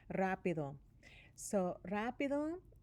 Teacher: You can hear that doble R sound in there, even though there's not a double R, because it's at the beginning of the word. It's got a vowel after it.